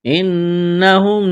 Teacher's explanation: نون مشدد ہے، آواز ناک میں چھپائیں گے، غنہ کریں گے